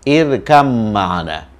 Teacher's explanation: Jadi oleh karena tempat keluarnya sama, maka dalam membaca, ba ini harus diasimilasikan ke mim